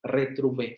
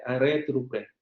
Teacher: también podemos encontrar el fonema vibrante múltiple, retrouver, por ejemplo, ¿no? O el vibrante simple, retrouver